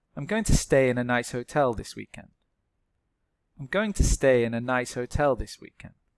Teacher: the strong words are going and stay